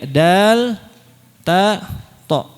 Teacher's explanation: Titik kedua pada makhraj dal, ta, tha. Dal, ta, tha itu pertemuan ujung lidah bertemu dengan pangkal gigi seri seri atas.